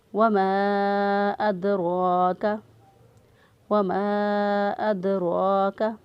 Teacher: یہاں پہ ہم ادا کریں گے، دال پر قلقلہ کرتے ہوئے دال کو ادا کریں گے، اور را جو ہے اس کو پر پڑھیں گے کیونکہ را کے اوپر زبر ہے، را پر زبر ہو تو را کو پر پڑھتے ہیں، را کے اوپر پیش ہو تو بھی را کو پر پڑھتے ہیں، را کے نیچے زیر ہو تو را کو باریک پڑھتے ہیں۔